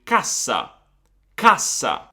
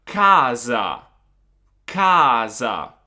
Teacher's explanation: As you can see, the previous A is a little bit shorter in the double consonant word. Now you may also notice that it's a different S, because in the first word I'm saying cassa, in the second word I'm saying casa.